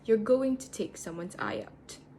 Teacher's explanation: When we listen carefully, Hermione's to is not stressed.